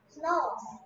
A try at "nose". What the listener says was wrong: 여기 S가 있나요? Snow인가요 이게? Nose라니까. 그건 Nose잖아. 뭔 소리 하는 거야? 없는 S 소리를 왜 내?